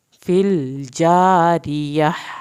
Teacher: यहाँ पे लाम नहीं हिलेगा, आखिर में हा की आवाज़ निकलेगी।